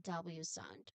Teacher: Remember here the tight lip rounding and of course it quickly relaxes.